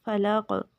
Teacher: جب ہم وقف کریں گے تو زیر جو ہے وہ جزم میں بدل جائے گی، اس لیے کلکلا ہوگا